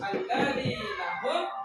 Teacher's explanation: Kemudian di sini apabila ada mim sukun berhadapan dengan huruf selain mim dan ba, cara membacanya yaitu dengan cara terang dan jelas dan bibir dalam keadaan tertutup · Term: izhar Syafawi